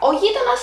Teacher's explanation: O γείτονας has the accent on the third syllable from the end.